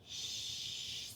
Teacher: Our SH sound, our shh sound with round lips